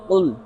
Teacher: ابھی ہم اس پر اگر بات کریں، قل سب سے پہلے قاف ہے، قاف دو نقطوں والا جو ہوتا ہے وہ صفت استعلاء اور صفت اطباق کی وجہ سے پر پڑھا جاتا ہے، اس لیے ہم اگر اسے قل کی بجائے کل پڑھ دیں، اگر ہم اسے پر نہیں کریں گے تو یہ دو نقطوں والی کاف کے بجائے جو لڑی والی کاف ہوتی ہے وہ کاف بن جائے گی اور اس سے معنی فاسد ہو جائیں گے۔